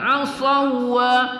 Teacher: kita idghamkan ya, asawa tapi tidak ada gunnah di situ